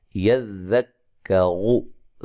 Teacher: يذكر، یہاں توجہ سے یا کو ذال سے، ذال کو کاف سے ملانا ہے سختی سے، ٹھیک ہے؟ يذكر، ذال کو نرم ادا کرنا ہے، را کو موٹا ادا کرنا ہے